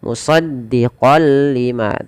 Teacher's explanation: Awalnya dibaca musaddiqon lima karena bertemu lam. Masuk tanwinnya kepada lam. Nunnya hilang. Musaddiqol lima tanpa ditahan.